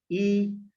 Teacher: ई बोलोगे तो आपके जीभ का सामने वाला भाग क्रियाशील रहेगा, मतलब सामने वाला भाग प्रभावित होगा।